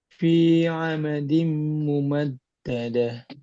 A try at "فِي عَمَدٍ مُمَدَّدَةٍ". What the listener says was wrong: Fi amadin mumaddadah ditahan lagi